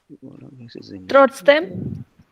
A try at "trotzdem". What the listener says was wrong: That trotzdem, that sounds like a question, as if you're asking me.